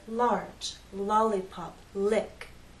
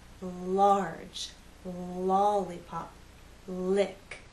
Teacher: your tongue are down that's to let the air flow out the air flows out on either side of your tongue while the tip stays up against that hard bump · the tip of your tongue is up but the sides of your tongue are down that's to let the air flow out the air flows out on either side of your tongue while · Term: L Sound